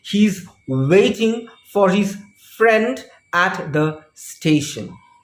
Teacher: Over here, there are three intonation units and therefore there are three tonic stresses. The first stress is on wait, the second is on friend, and the third is on station.